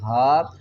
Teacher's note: ہا کو ہم حلق کے نیچے والے حصے سے ادا کریں گے، آواز بھاری آئے گی